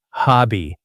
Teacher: The stress is on the first part.